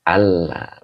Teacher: bila ada an bertemu lam itu idgham bilagunah